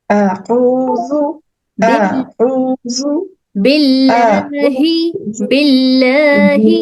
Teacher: یہاں پہ لام جلالہ کو باریک پڑھ رہے ہم, اور ہا کو نچلے حلق کے نچلے حصے سے.